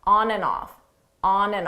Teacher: Notice here the and you don't hear it at all. It sounds just like an on, off, on, off, on off.